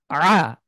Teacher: আইন, আ, ঠিক হা যেভাবে উচ্চারণ করি আমরা, এই হার মতনই আইন, কণ্ঠ, এটা কণ্ঠবর্ণ হলক থেকে উচ্চারিত হয়, হলক মানে হলো কণ্ঠ। তো আমরা কণ্ঠের মধ্যে চাপ দিয়ে যেভাবে হা উচ্চারণ করি ঠিক একই জায়গা থেকে আইন উচ্চারণ করব